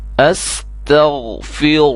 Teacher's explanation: را موٹی ہوگی، غین کو موٹا کرنا ہے، باقی سب کو باریک کرنا ہے